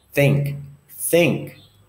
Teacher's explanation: what is my tongue doing is going underneath my front upper teeth for the consonant th's